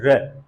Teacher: क्यों कहते हैं, हम लोगों ने समझ लिया, क्योंकि इसका स्वर की भी तरह उच्चारण होता है, और जब इसका उच्चारण करते हैं तो जो मुंह होता है वो लगभग खुला सा रहता है, और जो र है, जब हम इसका उच्चारण करते हैं तो जिह्वा क्या होती है, तुरंत मुड़ जाती है